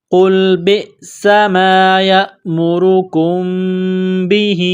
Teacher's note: میم ساکن کے بعد با ہے تو یہاں پر اقلاب کریں گے، غنہ کریں گے، آواز ناک میں چھپائیں گے